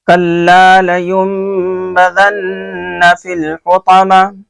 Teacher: کلا میں لام الف زبر لا ہے، اس کو ایک الف کے برابر کھینچ کر کے پڑھیں گے